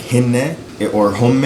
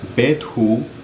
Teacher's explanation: at the end of words, when you put an H there, it really just makes like a long vowel, basically.